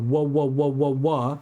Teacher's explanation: We also in English have the unvoiced bilabial sound meaning I go ww and that's the w sound in English which is made with both of my lips. W is the voiced bilabial sound.